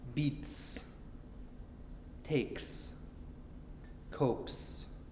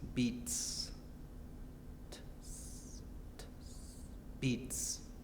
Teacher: this S sound is called voiceless if it ends in a T sound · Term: voiceless s